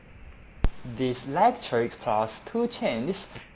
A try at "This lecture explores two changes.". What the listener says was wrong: Sounds like you're saying this lecture express, right? So I think you're having some problems with grammatical word endings. You have at least two problems in this response. You want to say expresses and changes.